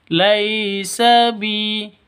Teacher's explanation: Laisa bi panjang dua ketukan karena ada ya mati diawali dengan kasroh. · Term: mad asli